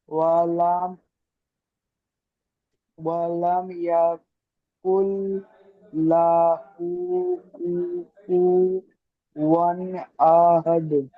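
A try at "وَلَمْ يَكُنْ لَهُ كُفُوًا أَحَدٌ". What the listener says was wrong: একদম ছেড়ে ছেড়ে পড়েন, এমন নয়, আমাদের আরো জড়তা কাটাতে হবে। ওয়ালাম ইয়াকুল্লাহু কুফুয়ান আহাদ। একদম ছেড়ে পড়বেন,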